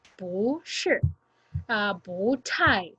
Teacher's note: if it is followed by a character with the fourth tone, it is we say it as the second tone or pronounced as the second tone